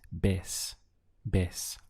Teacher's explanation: this V carries a B sound in Spanish